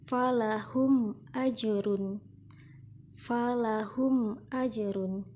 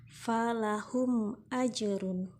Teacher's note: mim mati dibaca dengan jelas dan bibir tetap dalam keadaan tertutup, atau dalam bahasa Jawanya mingkem. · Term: izhar syafawi